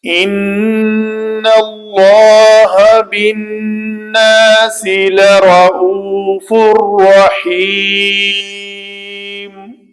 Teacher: تنوین کے بعد را ہے تو ہم نے اس کا ادغام کامل کیا، رعوفن کی نون جو ہے اس کو مکمل طور پر ہم نے ختم کر دیا